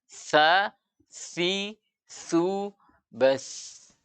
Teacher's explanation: ujung lidah bertemu ujung gigi seri atas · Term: huruf sa